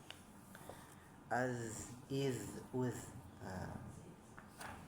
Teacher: Bukan hamas berarti ya. Zal itu dia jahar tapi rohwahan. Rohwah itu apa? Ngalir ya. Iz, uz. Jadi seperti ada angin tapi dia tertahan anginnya gitu.